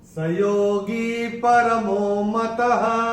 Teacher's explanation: चौथे चरण में ये जो त के बाद विसर्ग आ रहा है चरण की समाप्ति पे आ रहा है तो इसका उच्चारण ह ही होगा।